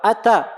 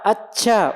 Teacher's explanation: Ini berlebih-lebihan. Dalam mengucapkan huruf ta sampai terucap C.